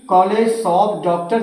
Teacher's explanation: आ और ओ के बीच का साउंड है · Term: आगत स्वर